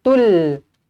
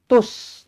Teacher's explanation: kita tak sebut lam matinya, kita tak sebut tul, tetapi kita masukkan terus ke dalam huruf yang bertanda sabdu, maka kita baca dengan tus. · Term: alif lam syamsiyah